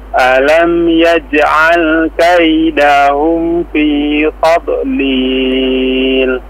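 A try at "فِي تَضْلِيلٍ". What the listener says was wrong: Iya, perhatikan ya, tadlil, tadlil. Jangan dipantulkan tad, ya. Atau dilepas dodnya, tadlil, tadlil, la. Tapi tadlil, tadlil. Tahan aja di dalam suaranya ya.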